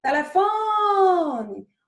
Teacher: Onde foi que ficou mais tempo? No fó. Então, o fó vai ser a nossa sílaba tônica. As outras sílabas são átonos.